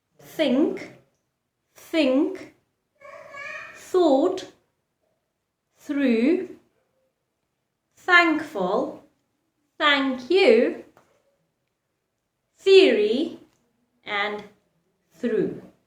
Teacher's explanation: i'm not making the sound from my vocal cord but the air is creating the sound the air passing through my mouth out of my lips is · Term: unvoiced sounds